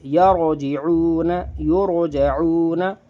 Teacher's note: اب دیکھیے یہ را ساکن ہے، اس سے پہلے زبر ہے، یہ را ساکن ہے، اس سے پہلے پیش ہے، یعنی کہ را ساکن سے پہلے زبر اور پیش ہیں، تو را ہم نے موٹی کری ہے